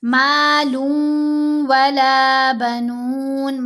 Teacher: مالن نہیں پڑھیں گے، لام کو واو کے ساتھ ملائیں گے